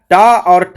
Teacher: ये मूर्धा से बोली जाने वाली ध्वनियां हैं